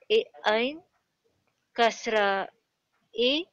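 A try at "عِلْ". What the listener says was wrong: No, no, don't say ain kasra e because we have skun here. So say ain kasra lam ayn. Sakin il. Join two words, two alphabets. Ain kasra lam means... sakin il.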